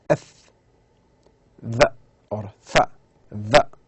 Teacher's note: So the upper teeth touches the lower lip. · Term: upper teeth with the lower lip